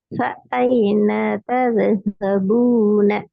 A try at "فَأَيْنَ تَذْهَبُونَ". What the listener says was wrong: பாவ நீட்டணும். நூனை நீட்டக்கூடாது. ஒரு ரெண்டு பிள்ளை இந்த பூவை நீட்டணும். இந்த நூனை நீட்டக்கூடாது. நீங்க இப்ப ஐன என்று போறீங்களே முதலாவதான் பிள்ளை. ந அல்ல ந தத்ஹபூன தது என்று வரக்கூடாது. தத்ஹபூன